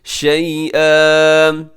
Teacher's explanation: شیئن پہ وقف کریں گے تو اسے الف مدہ کی طرح کھینچ کے پڑھیں گے